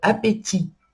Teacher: Appétit também tem um T no final, mas a gente não pronuncia ele.